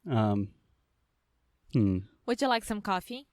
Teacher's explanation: So in general, we put a lot of intonation, or we place a lot of stress in questions, especially we have a rising intonation, which means it is going up at the end of a question